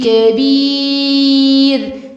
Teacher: الراء هنا مرققة مش مفخمة